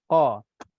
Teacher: Contohnya huruf qaf, qa. Huruf qaf ini di pangkal lidah, dia tak kena mengena dengan bibir mulut pun. Tapi bagi saya kalau kita cuba lebarkan bibir mulut kita, kan kita sebutkan huruf tebal.